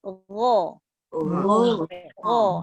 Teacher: lidah tengah tu dia melengkung, dia ke bawah aje. Yang naik tinggi tu, yang naik tinggi tu pangkal lidah aje.